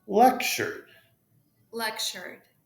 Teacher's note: TU in lectured, remember, TU becomes like CH.